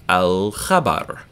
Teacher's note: Khabar is a piece of news, khabar, and it's pronounced in the back of your throat, back of your mouth, really, rather. So we're going to hear the L in alif lam, al-khabar.